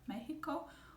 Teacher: So we say Mexico, like a soft H